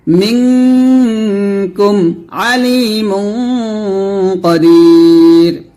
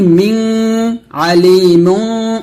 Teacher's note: হালকা নাকের ভিতর হতে উচ্চারণ করে গুন্নাটা করতে হবে। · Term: ইকফা গুন্না